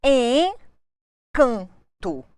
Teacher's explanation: tenho aqui duas vogais nasais